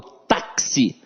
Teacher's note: esse X aqui tem um som de KS